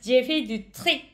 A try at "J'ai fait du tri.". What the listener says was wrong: Ou presque. La dernière lettre, vous avez prononcé un peu très. C'est la lettre I. Du tri.